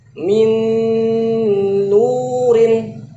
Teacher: Min, nun yang pertama dimasukin ke nun yang kedua. Ada gunahnya. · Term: idgham bi gunnah